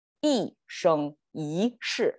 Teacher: So we make this curve, which is falling tone, flat, rising tone, and down, which is a better flow of tones.